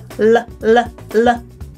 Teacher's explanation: We have the regular L, where the tip of my tongue is touching just behind my teeth on the ridge. L, L, L. And then we have what we call the dark L, where the back of my tongue is making contact. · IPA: /l/